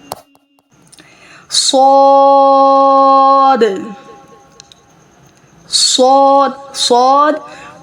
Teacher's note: صاد پر حروف ہے، heavy letters منہ بھر کر ادا ہوگا. سین، صاد اور سین بقدر 3 سے 5 الف کی مقدار کھینچ کر ادا کیے جائیں گے، اور صاد کے آگے جو دال ہے اس دال کے اوپر بھی کلکلا ہوگا.